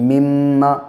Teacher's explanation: میم پہ کے اوپر تشدید جب بھی ہوگی تو ناک میں آواز کو 1 الف کے برابر ٹھہرا کر پڑھیں گے